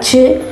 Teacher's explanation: These sounds are the result of plosive and fricative sounds. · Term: affricate sounds